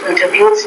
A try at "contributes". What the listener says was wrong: You want to say the word not contributes, but contributes. So stress is actually on that second syllable, not the third.